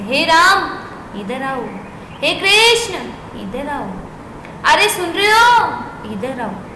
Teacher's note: थोड़ा सा ऊंचा बोलते हैं ना थोड़ा सा उसको लहरा के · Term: प्लुत स्वर